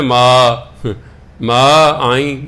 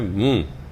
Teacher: ਮੰਮਾ ਮੂੰਹ ਰਾਹੀਂ ਨਹੀਂ ਬੋਲਣਾ, ਮੰਮਾ ਨੱਕ ਰਾਹੀਂ ਬੋਲਿਆ ਜਾਂਦਾ ਹੈ।